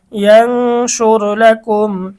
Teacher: মিম সাকিনের পরে র আসছে সুতরাং গুন্না হবে না মিম সাকিনের ইজহার স্পষ্ট করে পড়তে হবে